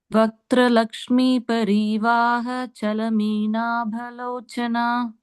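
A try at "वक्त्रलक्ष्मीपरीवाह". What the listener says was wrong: Parivaha, you should not extend it that much. Vaktra Lakshmi Pari.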